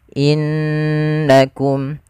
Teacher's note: Contoh innakum, harusnya ditahan dulu. Innakum, sambil dimasukkan ke rongga hidung kita. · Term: gunnah